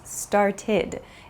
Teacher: start becomes started it has an id sound it's not an ed sound but an id sound